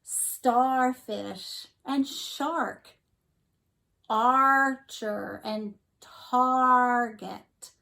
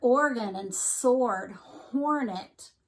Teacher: whenever an R follows a vowel, that you hear that R really big. You hear it more so than you hear the vowel. So it almost like it changes the sound that the vowel makes because Bossy R is so bossy.